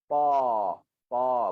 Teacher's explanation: Hujung lidah, belakang gigi atas. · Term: makhraj ta